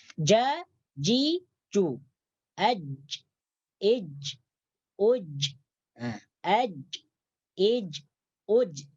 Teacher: Jadi makhrajnya jim ini adalah keluar dari pertengahan lidah menyentuh langit-langit atas. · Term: huruf jim